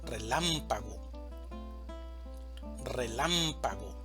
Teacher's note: La palabra relámpago tiene cuatro sílabas, una sílaba tónica y tres sílabas átonas. La sílaba tónica va a ser lam, relámpago, relámpago.